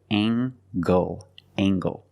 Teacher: use the nasal plus the hard G